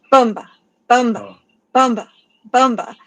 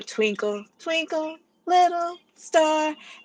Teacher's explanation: the first syllable is stressed unlike these other ones this one the first syllable is stressed and the second syllable is the softer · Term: trochaic